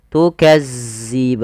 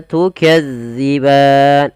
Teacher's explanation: ujung lidah kita agar sempurna daripada makhrajnya kita ee tempelkan ujung lidah kita dengan gigi seri atas.